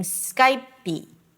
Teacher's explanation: you may hear people saying Skypey, with a very tiny E sound